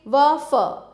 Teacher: दंतोष्ठ ऊपरी दांत व निचले होठ से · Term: दंतोष्ठ्य